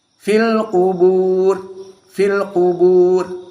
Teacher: Ra di sini dalam keadaan kasroh maka tarqiq. Kubur, ra-nya tidak dalam keadaan tafkhim karena dia majrur, apalagi sebelumnya sukun.